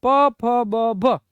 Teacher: ઓષ્ટીનો મતલબ થાય તો કે બે જે હોઠ છે એ ભેગા થાય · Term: ઓષ્ટીય